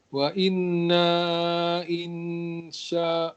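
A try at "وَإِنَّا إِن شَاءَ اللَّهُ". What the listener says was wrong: Panjangkan lagi sikit, jangan 2 rakaat, ada wave. Kan selalu saya bilang kat kelas Iqra, selalu saya bilang kalau ada wave jangan baca 2, lebihkan 2, 4, 5 rakaat pun tak apa. Wa inna insyaallah.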